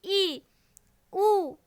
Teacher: संवृत स्वर के उच्चारण में मुख द्वारा लगभग बंद होता है